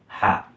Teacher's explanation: Nah, ini itu harus seperti suara bernapas kita gitu. Nah, jadi H itu cara pengucapannya seperti suara pernapasan, suara bersih dan nyaring. Jadi bersih, tidak ada hambatan suaranya itu.